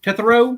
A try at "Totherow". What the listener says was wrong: It's Totherow. the T-O is pronounced more like T-U. So it's Totherow.